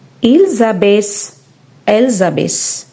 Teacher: In this conjugation, the end -ent is always silent, so it should not be pronounced.